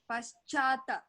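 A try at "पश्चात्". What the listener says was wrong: Paschat only. So here you have to note the shakara. How shakara is written.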